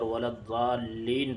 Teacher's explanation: ولا الضالین میں مد لازم ہوگا کیونکہ حروف مدہ کے بعد والے حرف پر تشدید ہے